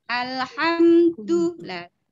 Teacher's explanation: Posisi huruf dal antara ujung lidah dengan gusi atas.